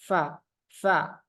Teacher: napasnya mengalir dengan deras fa fa kemudian suara dilepas Fa AF AF AF kemudian istifal